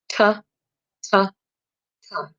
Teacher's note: The first letter T is a stop, disrupts airflow, quick, sharp staccato.